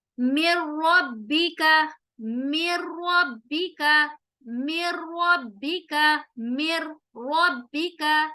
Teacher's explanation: نون ساکن کے بعد ہم نون ساکن کو را کے اندر مرج کر رہے ہیں اور ہم غنہ نہیں کریں گے را کے پر، ایسے مِن ربک، یہ غلط ہوگا، ہم یہاں پر رورنگ ساؤنڈ نہیں لائیں گے، مر غلط، مِن ربک، مِن ربک، مِن ربک، مِن ربک، ٹھیک ہے؟